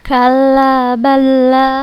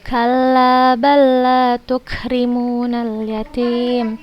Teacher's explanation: Kalla balla tukrimunal yatim. La sukun, huruf la sukun bertemu dengan huruf la yang berharokat, maka termasuk idgham mutamatsilain dan dibacanya langsung ke huruf yang kedua tanpa gunnah. Jangan disertai gunnah, tidak menggunakan gunnah.